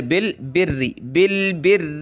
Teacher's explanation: را پہ جو ہے پہلے بھی زیر اور اس پر بھی زیر ہے تو پتلا کریں گے